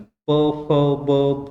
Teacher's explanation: भ या वर्णाचा उच्चार करताना दोन्ही ओटाचा वापर होतो म्हणून तो ओष्ट वर्ण आहे